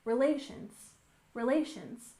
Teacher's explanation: And relations, we stress the second syllable, relations, relations.